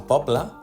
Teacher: A poble, la síl·laba tònica és “po”, així que la e es troba en posició àtona i llavors pronuncia com una vocal neutra.